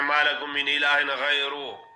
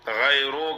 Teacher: قال یا قوم اعبدوا اللہ ما لکم من الہ غیرہ، آگے پڑھتے ہیں ما لکم من الہ غیرہ، مجہول پڑھتی ہیں را کو، غیرو کر لیتے ہیں، آگے ہا نہیں پڑھتے، جھٹکا دینا ہے، ہا ساکن ہے۔